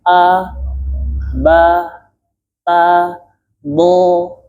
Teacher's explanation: huruf dad itu fathah yang ditebalkan. Makanya sama seperti a bibirnya terbuka.